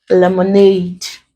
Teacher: If we have lemonade, you break into syllables. This word contains three syllables, and we are told that we stress on the last or the ultimate. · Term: ultimate syllable